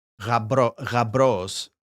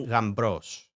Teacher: it is pronounced like mb, not b. So you wouldn't necessarily say rabros without the m.